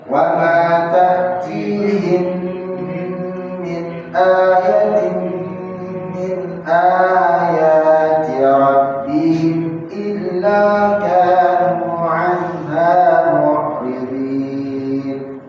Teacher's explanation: ingat ayat yang pertama hamzahnya saja yang panjang, ya. Ayat yang kedua hamzah dengan ya.